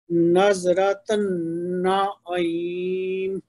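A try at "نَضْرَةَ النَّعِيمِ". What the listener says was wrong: اس کو زال کی آواز کی طرف نہ لے کے جائیں, یہ ضاد ہے.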